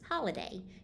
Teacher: do you hear how the syllable hall is accented or stressed in comparison to the other two syllables · do you hear how the second syllable is made up of only a vowel sound